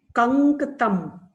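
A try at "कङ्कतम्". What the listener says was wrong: Kankatam. It is not Dakara, it is Nakara. It's Anunasika letter. Nasal.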